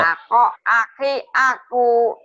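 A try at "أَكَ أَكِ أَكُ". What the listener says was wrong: Tuh, ibu biasa ujungnya tuh, Bu. Jangan dipanjangin. Jangan dipanjang, Bu. Yang ini yang pertama bunyi o. Tuh, ujungnya jangan dipanjangin, karena ini pendek.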